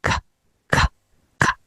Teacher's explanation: Using the sound K, the letter K, which is a voiceless sound which doesn't need the vocal cords to engage